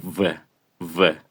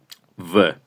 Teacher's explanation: Los dientes chocan con el labio inferior a la hora de decirlo.